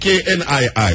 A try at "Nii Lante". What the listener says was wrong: Yeah, so the K is silent.